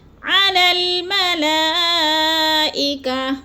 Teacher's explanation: علی الملائکہ، ملا میں بھی مد متصل ہے، کیونکہ حروف مدہ کے بعد حمزہ ایک ہی کلمے میں ہے تو مد متصل 4 الفی مد ہے، 4 حرکات کے برابر اس کو بھی لمبا کر کے پڑھنا ہے